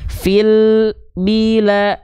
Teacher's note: dia masih mengalirkan sedikit suara tanpa terputus dengan huruf berikutnya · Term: lam sukun